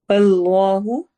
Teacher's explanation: اس میں جلالہ ہے، اور اس کے ہم نے لام کو لمبا کر کے پڑھنا ہے